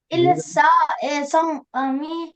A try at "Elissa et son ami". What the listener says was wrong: Et son ami, fais la liaison. Et son ami, fais la liaison. Et son ami,